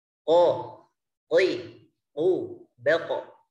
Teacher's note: Qaf ini tepatnya di langit-langit yang lunak.